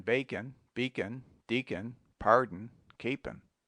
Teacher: drop the O in bacon Beacon Deacon pardon